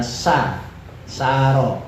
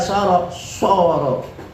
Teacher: Oke, misalnya sa, saro, misalnya a-nya itu dekat ke sin, tapi ketika soro ikut tafkhim a-nya.